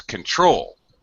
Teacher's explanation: To control has a second syllable stress.